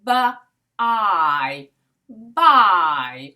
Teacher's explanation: we have the b sound and we have a diphthong, or 2 vowel sounds combined together